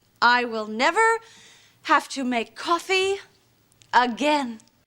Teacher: Have to make coffee. And again, she goes up in pitch because she's not done talking. And then the pitch at the end again goes down because that is the end of her statement.